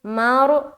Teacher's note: را کو پر رکھنا ہے کیونکہ رائے ساکینہ سے پہلے زبر آ گیا تو اسی لیے پر رکھیں گے.